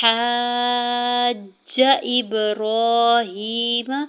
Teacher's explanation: تشدید پر ہم نے 1-2 سیکنڈ کے لیے رکنا ہے · حمزہ کی زیر کو با ساکن کے ساتھ ملاتے ہوئے با ساکن پہ کلکلا کریں گے۔ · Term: مد لازم